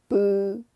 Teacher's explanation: 입술을 붙였다가 떼면서 바람을 부드럽게 내보내는 거예요. · 그래서 입술에서 나가는 바람이 거의 없어요. 굉장히 부드러운 소리입니다. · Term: 비읍